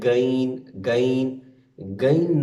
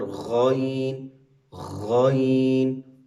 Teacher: غین، خا سب سے اوپر فرسٹ اعلیٰ حلق سے، غین، خا ان کا ایک ہی مخرج ہے